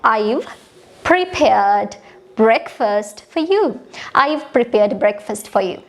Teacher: I've for you මේවා normally කියලා දානවා breakfast prepared මේ වගේ වට පොඩ්ඩක් intonation එක high කරනවා